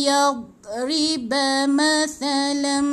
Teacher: Dia kena telan d tu. Tahan, jangan lepaskan.